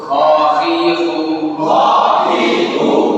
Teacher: হলকের শেষ হইতে, গাইন খা, গাইন খা